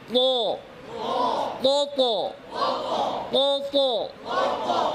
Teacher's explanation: মোটা করে আওয়াজ উপরে, জিহ্বার গোড়া উপরে, আওয়াজের গতি উপরে।